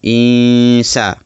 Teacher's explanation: nun mati bertemu dengan huruf sin. Nampak? Nun mati kemudian jumpa huruf sin. Jumpa huruf sin. Itu sebab dinamakan ikhfa hakiki dan bacaan kena dengung. Insa. Kerana sin ini salah satu huruf ikhfa hakiki.